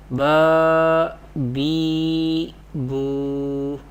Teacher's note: We pronounce the khadi harkat or vertical harakat by stretching them up to one alif, that is up to 2 harakat.